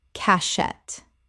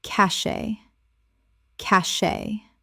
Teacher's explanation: 2 syllables with the T completely silent.